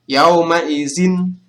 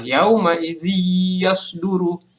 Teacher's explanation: Yang benar adalah bunyi kasratain ini dimasukkan ke huruf ya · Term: idgham bigunnah